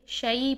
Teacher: ہم نے یالین کا ٹاپک پڑھا تھا، تو یالین کے ٹاپک میں ہم نے بتایا تھا کہ یالین کے لیے آئی کی ساؤنڈ ہوتی ہے، آئی کی ساؤنڈ میں ہم اس کو ادا کریں گے، اے کی ساؤنڈ میں شے نہیں کریں گے، شعی پڑھیں گے اس کو۔